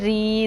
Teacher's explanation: देखे रौ का मैंने मोटा पढ़ा, लेकिन जब ज़ेर आया इसके नीचे तो फिर हमने री कर दिया।